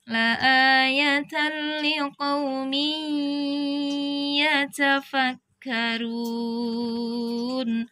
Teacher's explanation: tanwin bertemu dengan ya tasydid ini didengungkan idgham bi gunnah